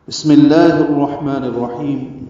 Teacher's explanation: بسملہ کے قواعد: مختصرا سین ساکن ہے، ہمس ہوگا، سانس جاری رہے گی۔ میم کی زیر کی وجہ سے لام اس میں جرالہ باریک پڑا جائے گا، ادغام شمسی ہے۔